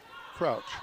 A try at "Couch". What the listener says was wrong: Crouch or Couch? There's no R in the name.